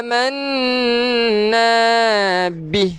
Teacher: Manna, pastikan kita dengung dahulu 2 harakat. Baru kita panjang na ni 2 harakat pula.